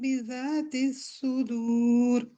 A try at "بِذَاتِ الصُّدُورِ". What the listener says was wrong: بذات سواد کو پہلا والا سواد ہیوی نہیں ہوا تھا، دوبارہ سے پڑھیں بذات سواد بذات الصدور.